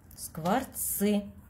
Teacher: Обратите внимание, что здесь после «ц» стоит буква «ы». Но «ц» всегда твердый звук. Даже если после него стоит «и» или «ы», этот звук всегда твердый.